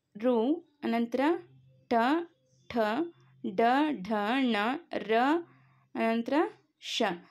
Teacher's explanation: ಈ ಅಕ್ಷರಗಳು ನಾಲಿಗೆಯ ಮೇಲ್ಭಾಗದ ಮೂರ್ಧವೆಂಬುದರ ಸಹಾಯದಿಂದ ಹುಟ್ಟುತ್ತವೆ ಆದುದರಿಂದ ಇವು ಮೂರ್ಧನ್ಯಗಳೆನಿಸುವವು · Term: ಮೂರ್ಧನ್ಯಾಕ್ಷರಗಳು